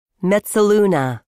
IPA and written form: mɛt səˈlu nə (mezzaluna)